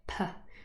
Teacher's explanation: we do not use our vocal cords here they don't vibrate they stay silent · them but there's a little puff of air and in fact when you just use your hand you can also feel the puff of air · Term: unvoiced, aspirated pa